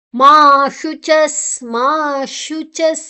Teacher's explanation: ಮಾ ಶುಚಸ್ ಮಾ ಶುಚಸ್ ಶು ಶು ನಮ್ಮ ನಾಲೈ ಈ ಕೂಲಿದ ಪಿರಾವು ಬರುಡು, ನಿಜ್ಜಿದ ಕೂಲಿದ ಪಿರಾವು ಬರುಡು. ಮಾ ಶುಚಸ್ ಚಸ್ ಚಾರ್ದ ಬೊಕ್ಕ ವಿಸರ್ಗ ರೆಡ್ಡ ಚುಕ್ಕೆ ಉಂಡು, ಐತ ಉಚ್ಚಾರಣೆ ಗಾಳಿ ಪಿದೈ ಪೋಪು